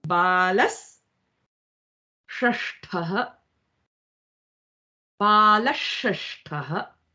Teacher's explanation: Or ta, tha, da, dha, na. Then your sa changes to sh.